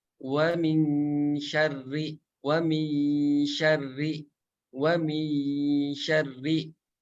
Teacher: Ketika membaca wa min syarri akan kerasa gitu bahwa dengungnya itu bertempat di tengah lidah nempel ke tengah langit-langit atas